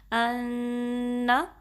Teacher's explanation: نون پہ تشدید ہے تو اس پہ آپ نے 2 سیکنڈز تک غنہ دینا ہے، 2 کاؤنٹس. ان، اور یاد رہے کہ غنہ کرتے ہوئے نا نون پہ یا میم مشدد پہ سم ٹائمز زبر اسٹریچ ہونے کا کیا کہتے ہیں ایک وہ ہوتا ہے، چانس ہوتا ہے، ٹھیک ہے.